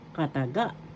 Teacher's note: First syllable ka, second syllable ta, third syllable ga. The accent is in the third syllable